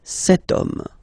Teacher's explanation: as in French, H is not pronounced, so the first sound that we hear is O, okay? And then it will follow the same rule.